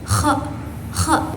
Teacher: Nah, huruf K ini keluar dari ujung tenggorokan juga. Tempatnya sama kayak huruf g tapi suaranya lebih berhembus